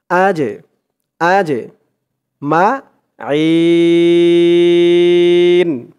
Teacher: আজে জিমটা হচ্ছে কলকলার হরফ ধাক্কা দিয়ে পড়তে হবে কলকলার হরফ মানেই ধাক্কা দিয়ে পড়া আজে আজে মাজেমা জের পরে